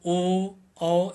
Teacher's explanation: अगला है कंठ ओष्ठ। कंठ्योष्ठ इसको पढ़ेंगे तो इसमें देख कंठ और ओठ क्रियाशील रहते हैं